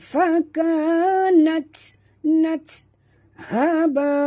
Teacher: Dua harakat nat. Okey, huruf ta itu mati sahabat. Jadi kita kena bunyikan hamasnya.